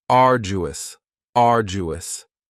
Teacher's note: Next is arduous, and arduous has 3 syllables, and the stress is on the first syllable, arduous. Now, you don't hear that D sound that much. It's not very strong. It almost sounds a little like a J.